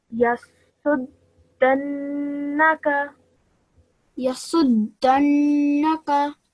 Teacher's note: Bear in mind that yes, the gunna sound on the noon for 2 seconds. However, the fatha is still there, and fatha should only be produced a sound of 1 second